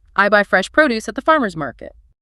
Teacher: The noun produce refers very specifically to fresh fruits and vegetables, agricultural goods, stresses on pro.